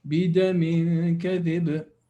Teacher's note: if you stop, you make the qalqala obvious